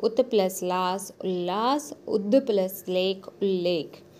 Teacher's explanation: यदि त या द के बाद ल रहे तो त और द भी ल में ही बदल जाते हैं